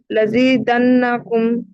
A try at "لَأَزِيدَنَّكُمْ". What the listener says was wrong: لَزِيدَنَّكُمْ نہیں, لَأَزِيدَنَّكُمْ. حمزہ پہ زبر ہے. لَأَزِيدَنَّكُمْ.